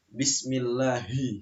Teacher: Ha itu letaknya di kerongkongan ya, di halqiyah, di kerongkongan.